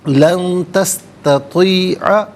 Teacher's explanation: لن میں نون ساکن ہے، اس کے بعد تستطیع میں تا حرف اخفا ہے، تو نون ساکن یا تنوین کے بعد حرف اخفا ہو تو نون ساکن ہو یا تنوین ہو اسے اخفا کے ساتھ پڑھتے ہیں۔ اخفا کہتے ہیں ناک میں آواز دے جا کر گنگنانا۔